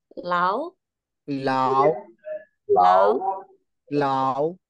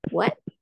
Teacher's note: itu nada kedua sama dengan What ya kan What kita kaget what jadi dia naik ke atas